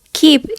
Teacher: For example, in the word keep is articulated further forward because the k is followed by the front vowel.